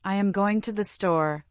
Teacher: The stress falls clearly on going and store.